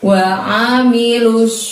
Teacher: di situ menggunakan ain, maka keluarkan hurufnya dari tenggorokan. Mulutnya tidak ada pergerakan ya.